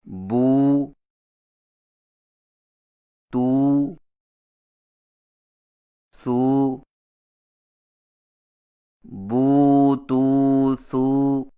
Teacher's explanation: الٹی پیش ہونٹوں کو گول کر کے تھوڑا سا کھینچ کر پڑھا جاتا ہے، اور اس کی آواز کا رخ سامنے کی طرف ہوتا ہے